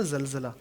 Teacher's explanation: زبان کے نوک ذرا وائبریٹ ہوگا دانتوں کے ساتھ، پھر زا ادا ہوگا